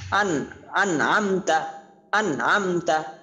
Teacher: নুন সাকিনের পরে কি আসছে? আইন আসছে, ইজহার হরফ, এই জন্য গুণনা করা হয়নি।